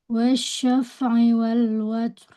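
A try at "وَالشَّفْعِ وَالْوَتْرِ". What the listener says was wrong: Ro-nya nggak kedengaran nih. Watur.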